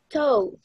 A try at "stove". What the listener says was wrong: Perfecto, muchas gracias.